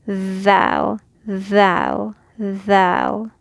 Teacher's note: the tip of the tongue is outside. It presses against these top teeth. And there's a vibration. So you can go ahead and physically put your tongue outside of your teeth and add some kind of like air, and the vibration will go thou, thou, thou.